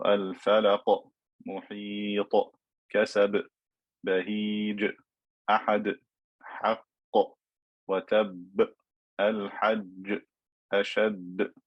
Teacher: Some ulama refer to this type of qalqala as qalqala kubra, where you stop on the qalqala letter. It should be louder or stronger in sound compared to the qalqala that is in the middle of a word or is joined to the next word.